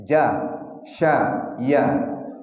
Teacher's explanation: yang keluar dari tengah-tengah lidah ada 3 huruf. Jin, shin, ya. Di pangkal lidah, di tengah-tengah lidah kita.